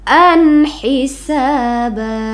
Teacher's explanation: pada Hamzah ada tanwin bertemu dengan huruf Izhar yaitu ha ya jadi bacaannya tidak didengungkan harus jelas an hisaba gitu ya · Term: izhar halq, izhar halqi